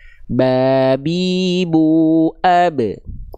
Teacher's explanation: Dari bibir, bibir atas dan bibir bawah disentuhkan. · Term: huruf ba